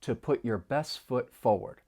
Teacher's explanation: Now, often this may happen with either the t or d sounds when they come between two consonants. So the final T in best, it comes between two consonants, so it's going to elide, and you're not really going to hear it. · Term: elision